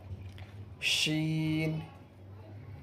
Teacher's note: بیچ زبان تالو سے مل کر شین ادا ہوتا ہے۔